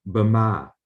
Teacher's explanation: the word Burma with the schwa here, it's like a weak syllable, a short syllable